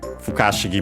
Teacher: Fukashigi, by the way, accented on the ka, so be careful.